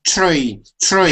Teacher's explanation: If you have a TR that are together, it'll make a chur sound.